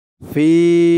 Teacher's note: অক্ফ করার কারণে জেরের পরে ইয়া সাকিন, এক আলিফ টানটা ৩ আলিফ টান হয়ে গেছে। ফি বলে ৩ আলিফ টান দিয়ে এই লামকে ধরতে হবে।